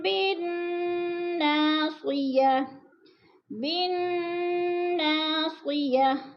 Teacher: بن کی نون مشدد ہے، سختی سے پڑھیں گے